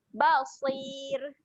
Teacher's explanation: Ra dekat hujung ni dia menjadi ra yang nipis, keadaannya basir.